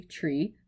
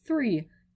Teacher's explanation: it's saying the t sound became the th sound